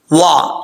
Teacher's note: واو کو پڑھتے وقت ہونٹ گول کریں گے